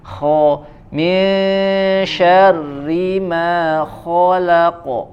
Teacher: Kho-nya lepas seperti huruf H, ya, tidak terlalu mengalir, ya, agak sedikit tertahan.